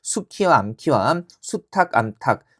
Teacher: 수 붙었을 때 거센 소리 나는 것이 표준어가 되는 겁니다